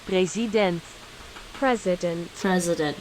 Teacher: in english the i turns into a schwa